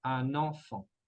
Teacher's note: la N se va a conectar con la vocal nasal en de enfant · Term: liaison